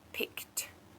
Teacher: when we say the past tense with ed on the end of words, we actually pronounce it as a T.